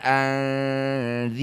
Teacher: Dumah diikuti wau sukun disebut bacaan mad thaobi'i. Panjangnya dua harakat saja. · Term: mad tabi'i